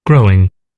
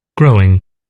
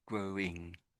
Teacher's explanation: I can't really hear the W personally, but I think it's sort of okay to say it slightly.